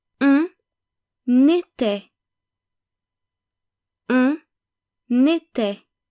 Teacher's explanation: Did you notice that we pronounce the N of on and the S of nous, vous, il and elle? The reason we pronounce them is because they were followed by a vowel. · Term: making the liaison